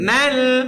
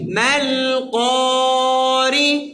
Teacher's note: মা লম্বা হবে না মিম গিয়ে সরাসরি কাকে ধরবে লামকে